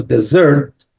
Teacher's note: the stress is on the second syllable, dessert